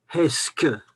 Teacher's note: Vous voyez, le P est devenu K.